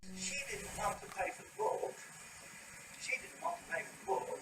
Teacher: “She” is accented. It starts this descending trend in the pitch contour.